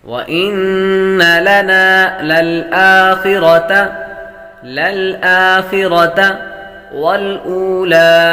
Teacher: نون مشدد پر ہمیشہ غنہ ہوتا ہے تو غنہ کریں گے